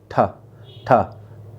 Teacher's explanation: तो ठा का उच्चारण करते समय हमारे मुख से अधिक वायु आती है